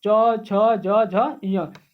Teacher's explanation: और च से दोस्तों, च से क्या हो जाएगा, तालव्य ध्वनियां, यानी कि तालु, जीभ जो है हमारे तालु पे सट रहा है बोलने में